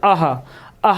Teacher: आहा बोल रहे तो जोर कहाँ पड़ रहा, कंठ पर पड़ रहा है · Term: विसर्ग